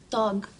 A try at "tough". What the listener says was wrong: Oh, remember I told you the GH sometimes sounds like an F. It's tough, like rough or laugh.